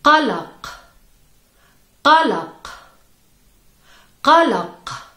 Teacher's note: In this word, you have the guttural sound Q two times, in the beginning and the end of the word.